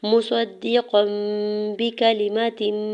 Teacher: تنوین کو میم میں بدل کے پڑھیں گے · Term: اقلاب